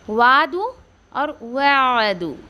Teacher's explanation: आइन के आवाज़ को ठहरा के निकाल रही हूँ आराम से हलक में, ना कि मैं उसको मद दे रही हूँ